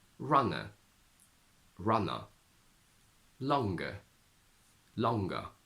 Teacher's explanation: when a word ends in a schwa sound in RP Cockney makes it much much stronger almost like a uh sound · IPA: /ə/